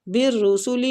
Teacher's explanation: با کو را کے ساتھ شدت سے ملائیں گے اور را کو پور پڑھیں گے پیش کی وجہ سے